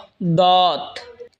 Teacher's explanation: জিহ্বার আগার কিনারা ওপরের মারের দাঁতের গোড়ার সঙ্গে লাগা উচ্চারণ হবে দত